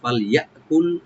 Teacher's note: ফা ওপেন রাখবেন, লামে কোনো কলকালা হবে না